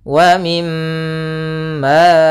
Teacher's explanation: cara membacanya yaitu suara mimnya ditahan dulu wa mim sepanjang dua harakat kemudian wa mimma kemudian Ma Di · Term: gunah